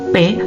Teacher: Udara dihentikan sebentar oleh bibir yang tertutup rapat, kemudian dilepaskan secara tiba-tiba